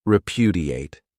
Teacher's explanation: This verb has four syllables and the stress is on that second syllable.